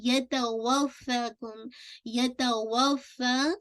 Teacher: فا کو آپ کو 2 کاؤنٹ پڑھنا ہے